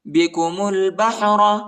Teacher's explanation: میم کو لام کے ساتھ ملائیں گے، الف نہیں پڑھا جاتا، اور را کو جو ہے موٹا پڑھنا ہے